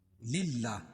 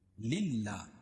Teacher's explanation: اللہ کا لام باریک پڑھیں گے کیونکہ اللہ کے لام سے پہلے لام کے نیچے زیر ہے